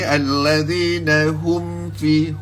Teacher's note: kita tekan sikit bibir mulut kita tu supaya jelas dan juga tidak ada gunnah pada mim dengan fa tadi